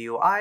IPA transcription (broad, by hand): gwi